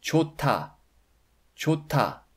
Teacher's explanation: The final 흐 consonant is silent, but it affects the sound of the initial 드 consonant in the next block.